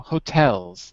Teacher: second syllable stress on the second syllable